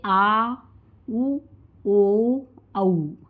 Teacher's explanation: जिन स्वरों के उच्चारण में जिह्वा का पश्च यानी पीछे का भाग ऊपर उठता है वह दोस्तों आपका पश्च स्वर कहलाता है।